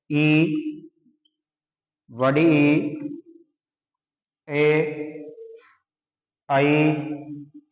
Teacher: जीवा का जीव का अगला भाग ही सक्रिय रहता है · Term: अग्र स्वर